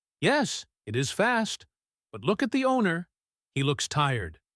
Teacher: the emphasis is on fast for the dog and tired for the owner. It is a simple contrast.